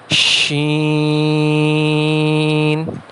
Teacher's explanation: زبان کا بیچ جب اپنے مقابل اوپر کے تالو سے لگے تو اس سے شین ادا ہوتا ہے